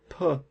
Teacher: we closed our lips and then we let out a puff of air so puck is a stop because we have stopped airflow and